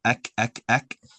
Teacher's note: the kaf comes from in front of the uvula, where it's more solid. It's not really meaty, but it's a solid part.